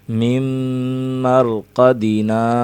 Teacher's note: یہاں ادغام کا قاعدہ لگ رہا ہے، غنہ کریں گے، میم کی آواز غالب رہے گی۔